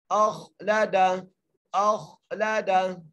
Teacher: حمزہ کو خا سے ملانا ہے، خا موٹے حروف میں سے ہے تو ہم یہاں پر خا کو موٹا کرتے پڑھیں گے